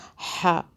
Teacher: ہا یہ والا جو ہے حلق سے تھوڑا سا آگے سے ادا ہوتا ہے